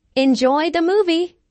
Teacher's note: notice how the intonation Rises on movie this is said in a friendly way and is followed by